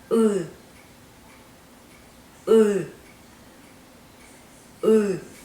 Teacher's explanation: You pronounce it as an English E, but the tongue would go back as if you are pronouncing U. If you practice going back and forth between these two sounds, you should be able to pronounce the U sound.